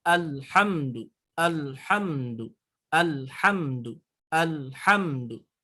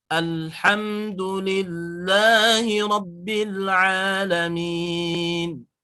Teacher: Ketika cara pengucapan di lam itu di alhamdulillah tidak boleh ada pantulan. Itu ya. Yang mana huruf lam tadi mempunyai huruf ataupun mempunyai sifatul huruf yang disebut dengan sifat huruf inhiraf.